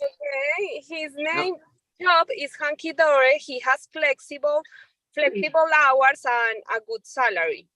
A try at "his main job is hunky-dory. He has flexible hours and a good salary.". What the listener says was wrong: Perfection.